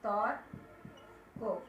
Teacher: আদ্য অ এর পরে রেপ যুক্ত থাকলে তবে সেই অ বিবৃত হয় অর্থাৎ অ এর মতো হয়। যেমন দেখো তর্ক, তর্ক, এখানে কি হবে, তর্ক, আমরা কখনোই বলবো না তর্ক, তর্ক।